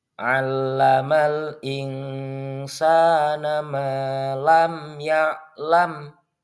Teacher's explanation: Bacaannya harus jelas dan terang tanpa mendengung dengan bibir yang merapat saat melafalkan huruf mim tersebut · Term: izhar syafawi